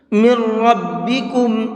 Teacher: میم کو ڈائریکٹ را میں ملا کر کے پڑھیں گے، اور یہ نون نہیں پڑھا جائے گا، اور را کو پر کر کے بھی پڑھیں گے۔